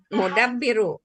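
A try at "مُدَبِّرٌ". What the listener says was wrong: Bukan ru, tapi run. Mudabbirun.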